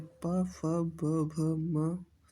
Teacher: ओष्ठि व्यंजन जिन वर्णों का उच्चारण ओठों से होता है उन्हें ओष्ीय व्यंजन कहते हैं।